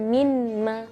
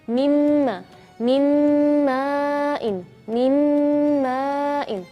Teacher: Terus kalau nun sukun ketemu huruf mim, bacanya mimma, bukan minma, tapi mim, mim, bukan min, minma, bukan, tapi mimma. Jadi seolah-olah nun di situ tidak ada, ya. Jadi langsung dari mim masuk ke mim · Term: idgham